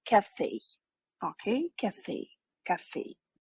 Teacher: Так ось, у всі слова у французькій мові, вони в них наголос іде на останній склад